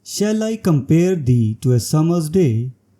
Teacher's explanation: The lines are acatalectic, each containing 10 syllables and adhering to the iambic pentameter pattern, providing a harmonious and balanced rhythm.